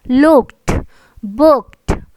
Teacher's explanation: तो उसकी pronunciation last में ड नहीं आपको प्रोनाउंस करना, उसकी प्रोनाउंसिएशन ट होगी. जैसे कि इस वर्ड की प्रोनाउंसिएशन होगी लुक्ड, नॉट ड बट प्रोनाउंस इट ट.